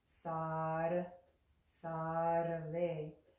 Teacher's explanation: when we make the ra sound, sar, sarve, it's a little like a rolled R in Spanish. Here's the place that I want you to find in your mouth to make that sound appropriately.